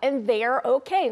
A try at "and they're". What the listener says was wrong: Yeah, and they're and they're. 마치 이제 in there 그 안에처럼 더 들릴 수 있을 것 같아요. Yeah, and they're and they're okay. 발음했습니다.